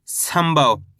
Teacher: इसके बाद वाला अक्षर भा, ये रहा भा, अपन यहाँ पे आधा माँ पढ़ देंगे